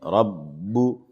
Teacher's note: ہے اور تشدید بھی ہے اس لیے با میں سختی ہے، تشدید چونکہ سختی چاہتی ہے اس لیے با میں تھوڑی سی سختی کریں گے